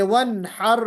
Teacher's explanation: अपने मखरज से बिला गुन्ना जाहिर हो गई है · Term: इजहार